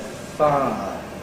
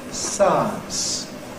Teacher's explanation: sometimes the [ ɪ ] bit of the [ aɪ ] isn’t heard. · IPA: ˈfaə